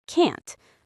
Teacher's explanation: But in fast speech, the t is often silent. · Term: negative contractions